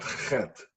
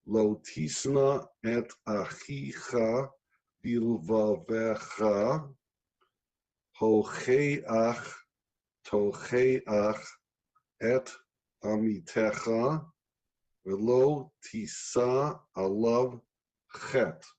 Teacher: ch comes from the back of the throat. That means it is a sound, probably it's the only sound that comes from the deepest part of you, another poetic way of resonating with the inner you. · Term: ch sound